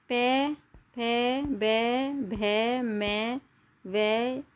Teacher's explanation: जिन ध्वनियों का उच्चारण दोनों होठों के स्पर्श से होता है उन ध्वनियों को द्योष्ठ ध्वनि कहते हैं।